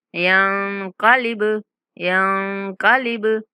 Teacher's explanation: कलकला का मतलब होता है थोड़ा सा हिला कर पढ़ना, ठीक है। तो हम यहाँ बा को थोड़ा सा हिला कर पढ़ेंगे।